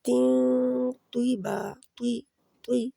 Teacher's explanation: ناک میں اس آواز کو ایک حرکت کے برابر چھپا کے پھر نکالنا ہے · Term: اخفا